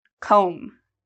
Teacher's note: do you hear the B sound comb no there's no B sound because again we have this m so that means no B pronunciation okay you see this this